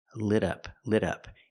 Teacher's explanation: We hear the T in lit as a fast D.